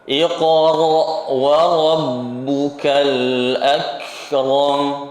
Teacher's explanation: Al-akram, kafnya dikasih sifat hamas tanpa menghilangkan sifat syiddahnya. Karena memang sifat hamas untuk huruf kaf ini sifat takhallus, solusi dari buntunya suara huruf kaf.